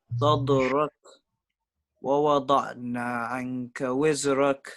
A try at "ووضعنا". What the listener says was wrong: ووضعنا. Give the ayn more time. ووضعنا عنك وزرك. Don't make the ayn very imprisoned. You are saying ووضعنا. No. ووضع ووضعنا عنك وزرك. Give it more time.